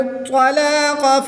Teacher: طا حرف مستعلیہ میں سے ہے تو اس کو پر یعنی موٹا پڑھیں گے۔ قاف بھی حرف مستعلیہ میں سے ہے تو اس کو بھی پر یعنی موٹا پڑھیں گے۔ قاف کے اوپر کھڑی زبر ہے اس لیے اس کو لمبا کریں گے، 1 الف یعنی 2 حرکات کے برابر لمبا کر کے پڑھیں گے۔